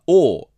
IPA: oː